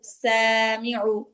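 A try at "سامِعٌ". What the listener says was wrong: আইন উচ্চারণ হচ্ছে না আপুর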